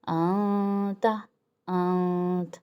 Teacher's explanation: انتا ہم تھوڑا سا گیپ رکھیں گے، نون ساکن نون کے جو مخرج ہے اس میں اور زبان کے کنارے میں ہم تھوڑا سا گیپ رکھیں گے اور آواز کو ناک میں پہنچائیں گے۔ انتا، انت، اور رکیں گے کتنا، ایک الف کی مقدار، یعنی ایک انگلی کھولی اور بند کی۔ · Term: اخفا